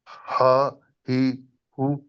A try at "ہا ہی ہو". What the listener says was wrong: نہیں آپ نے وہ جو جہاں سے تلفظ نکلنا ہے اس کو ٹھیک نہیں کر رہے، اس لیے کہ حلق سے نکلنے ہیں یہ الفاظ.